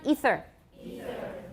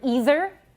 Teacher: so it's voiceless and interdental, fricative.